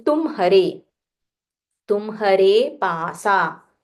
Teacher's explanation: Again, ma is half, ha is full.